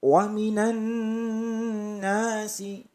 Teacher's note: Nun bertasydid didengung tiga ketukan